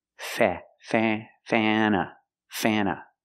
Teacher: It is pronounced Fana, Fana. Use the short A sound. Before the N, it changes a little bit. It becomes a little more nasal in your nose.